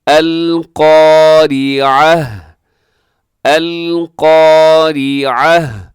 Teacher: سب سے پہلے القارعۃ، قاف اس کے اندر موٹا پڑا جاتا ہے، اور یہاں اگر آپ وقف کر دیں گے تو گول تا جو آخر میں ہے وہ ہا کے ساتھ تبدیل ہو جائے گی